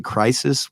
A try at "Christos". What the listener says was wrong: No, there's a T in that. I was always saying it Christos, but it's Christus or something like that. Krystos is how it's spelled.